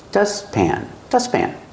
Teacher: When you have a T between consonants and you link the sounds, you don't really hear the T. You just hear dustpan.